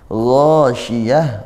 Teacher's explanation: gha termasuk huruf tebal ya, huruf isti'la, maka kita naikkan pangkal lidahnya, ditebalkan. Gha juga di sini mad tabi'i, panjangnya satu alif atau dua harokat.